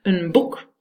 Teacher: In this case, the effect goes backwards, so the b, the voiced b, influences the n, and the n becomes a m, because you, in this case, it's not really voicing, it's to do with articulators. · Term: regressive assimilation